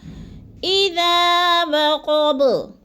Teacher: تھوڑا سا لمبا کر جانا ہے، الف مدہ ہے، اور وقب، با کو وقف کی صورت میں ساکن کر کے پڑھیں گے اور تھوڑا سا ہلائیں گے، قلقلہ ہوگا،